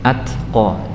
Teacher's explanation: huruf ta itu secara sifat itu adalah jahar ya, kemudian shiddah